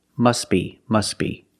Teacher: the t is silent because it's between consonants when link the words must be link The Sounds s with a B